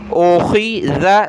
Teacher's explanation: خا کو گلے سے نکالیں موٹا کر کے